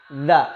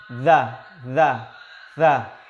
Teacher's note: Maka za ini lahir di ujung-ujung lidah. Za. Cuma mulut lidahnya agak dijulurkan ke depan sedikit.